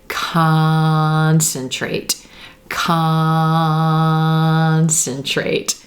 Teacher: letter c-o-n the vowel sound at the core is stretched concentrate when we have a word like that where the c-o-n is the stressed syllable it's going to be pronounced like the ah as in olive sock sound